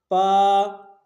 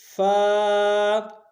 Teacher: دانتوں کو ہونٹوں کے اندر والے حصے سے ملائیں گے تو یہ حرف اصلی حرف ادا ہوگا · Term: حرف فا